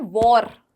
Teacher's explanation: British spellings में जो आर का जो प्रोनाउंसिएशन होता है वो थोड़ा सा ना साइलेंट कर देते हैं